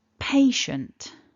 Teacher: syllable one is our strongest syllable so we want to emphasize that